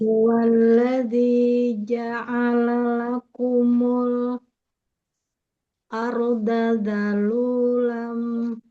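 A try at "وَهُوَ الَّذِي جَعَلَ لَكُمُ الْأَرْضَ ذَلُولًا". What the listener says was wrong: Bukan arda, ardo. Ardo. Ardo, Bu.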